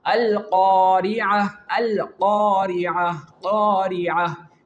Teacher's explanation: the root of the tongue is the makhraj of the letter qaf. So, when we pronounce the letter qaf, the sound is also blocked.